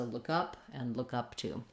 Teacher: still stressing on the first of the 2 prepositions